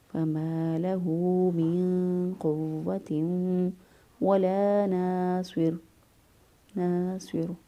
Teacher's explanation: اس سے پہلے صوت چونکہ موجود ہے، صوت جو ہے وہ اس کو پر پڑھیں گے، اس لیے اس را کو پر پڑھیں گے